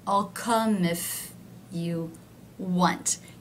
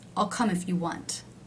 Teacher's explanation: if is one of the words that is not stressed. It is lower in pitch. I'll come if you want. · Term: function words